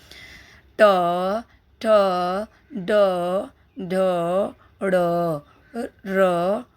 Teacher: हमारे जिह्वा जिस भाग को, खुरदरे भाग को टच कर रही है यानी उसको सेरेब्रेट यानी मूर्धन्य हिंदी में कहते हैं।